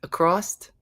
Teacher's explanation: some people say the word across with a t